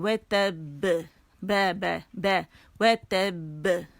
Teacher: اب موٹا کلکلا نہیں ہے, باریک ہے